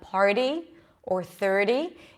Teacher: it sounds a little less like a Spanish are it sounds more like a very light D